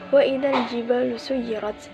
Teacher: Wa idza terdapat hukum bacaan matobi'i karena alif didahului fathah. Cara bacanya ialah dibaca panjang selama dua harokat atau satu alif.